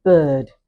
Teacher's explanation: So we're going to describe vowel number 11 using our four parameters is described as half open, central or mid, unrounded and this time tense, half open, central, unrounded and tense